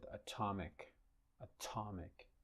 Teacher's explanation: In the word atomic, the t is not word initial, but is syllable initial. Okay? And it is aspirated,